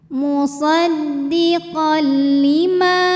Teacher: karena ada Alif didahului harakat fathah maka huruf mim panjang dua harakat